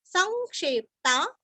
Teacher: स के ऊपर अनुस्वार का उच्चारण वांग्मय का ग